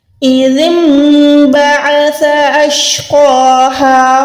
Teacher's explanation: عین حلق کے درمیان سے ادا ہوگا